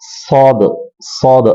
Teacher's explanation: സ്വാദിന്റെ മഹ്റജ് നാവിന്റെ തുമ്പും മുൻപല്ലിന്റെ മുകളിലെ മുൻപല്ലിന്റെ പുറകു ഭാഗവുമാണ്